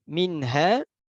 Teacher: nun sukun itu di ujung lidah dan ha itu ada di dasar lidah atau ya aqsal halqi.